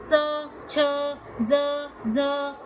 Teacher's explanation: च छ ज झ त्र य आणि श मुखाचा भाग आहे तालू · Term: तालव्य